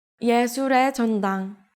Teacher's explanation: when 의 is used as a particle, it is usually read as 에 because it's easier to say